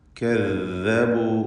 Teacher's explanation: ദാല് ശ്രദ്ധിക്കുക. കദ്ദബു നാവിൻ്റെ അറ്റത്തിൻ്റെ മുകൾ ഭാഗവും മേലെ മുൻപല്ലിൻ്റെ അറ്റവുമാണ് ദാലിൻ്റെ മഖ്റജ്.